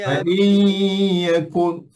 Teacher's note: nun tak bunyi dah. Nun tak ada apa dah situ. Sebab nun dah idgham, dah dimasukkan dalam ya. Dan hukumnya nama dia idgham.